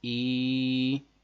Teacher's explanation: یا ساکن سے پہلے زیر ہے، سبق ساتھ میں آپ نے پڑھا ہے، اس کو ایک الف لمبا کریں گے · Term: یا مدہ